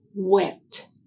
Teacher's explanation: air is blocked by the lips, which are almost closed, and then open to form a larger circle as the sound is made. is a voiced sound.